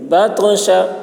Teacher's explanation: شین کی آواز سیٹی کی جیسی ہوگی